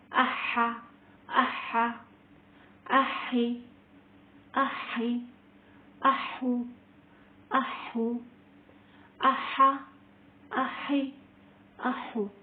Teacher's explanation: اب دیکھیں یہاں پر دو حمزہ اکٹھا آ رہے ہیں اور دونوں حمزہ کو سینے کی طرف سے جو حلق کا حصہ ہوتا ہے نا وہاں سے پڑھتے ہیں